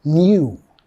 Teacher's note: En Estados Unidos vamos a decirle new, ¿ok? En Inglaterra van a meter un sonido Y ahí, aunque no está escrita